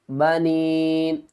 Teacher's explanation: یا کے اوپر چھوٹی مد ہے، 3 الف کی مقدار کھینچ کر پڑھیں گے